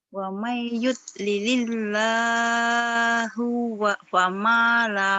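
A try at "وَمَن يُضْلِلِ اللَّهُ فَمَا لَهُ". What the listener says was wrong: jangan kepanjangan. Wa may yud lilillahu fama. Lahu fama. Jangan panjang-panjang. Lilil. Wa may yud lilil. Wa may yud lilil. Wa may yud lilillahu. Bukan wa may yud lilil. Lililnya yang setelah yang kedua. Wa may yud lilil. Lilillah. Lilillah.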